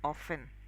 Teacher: the actual pronunciation of that word is often. The T is silent.